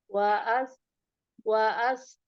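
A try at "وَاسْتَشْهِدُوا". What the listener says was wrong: Langsung was. Ini jangan waas, tapi was.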